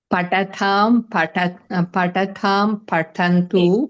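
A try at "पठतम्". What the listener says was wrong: We cannot say tha and the alternatively because we have to be specific. Patatam, the only. Alpa prana only should come.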